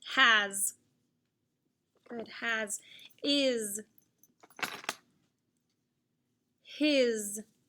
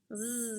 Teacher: And Z is the voice sound because it's vibrating like the TH.